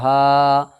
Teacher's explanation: خڑا زبر کو ایک الف کے برابر کھینچ کر کے ادا کریں گے